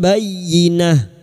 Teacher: Membalik atau menukar. Membalik seperti bertemu mim namun siap membunyikan huruf ba dan mendengung selama 3 harokat. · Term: iklab